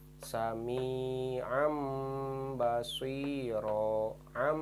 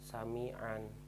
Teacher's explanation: di mana ada nun mati dan tanwin bertemu huruf ba dibacanya harus berubah berbunyi huruf mim